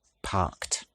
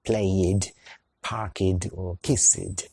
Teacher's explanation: park, parked kiss, kissed So remember that both these types are different to what we talked about in part 1, none of these verbs have an extra syllable